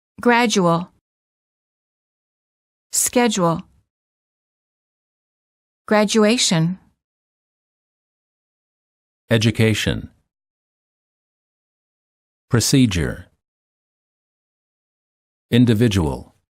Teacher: D plus U is usually pronounced as j, as in the word joke.